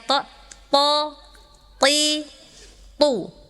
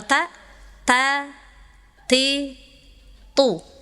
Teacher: Nah, memang ini to kasrah memang agak susah, ya, karena ta dan to makhrajnya sama, ujung lidah ke gusi, ya, pangkal gigi yang atas. Tapi kan beda, kalau to itu sifatnya istighfar, jadi naik, pangkalnya dinaikin, ya.